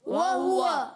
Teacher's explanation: واو کی ادائیگی ہونٹوں کی گولائی سے. ہاں پر بھی پیش ہے، واو پر زبر ہے، مگر یہ تمام تینوں کے تینوں ہونٹ گول ہوں گے.